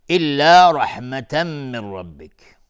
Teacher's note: تنوین بعدش میم ادغام با غنه. من ربک نون ساکن بشه را ادغام بدون غنه.